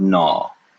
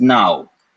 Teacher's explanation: in modern Hindi you can say both you can either say aw or you can say out